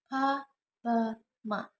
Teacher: consonant Sounds which are produced by putting two lips together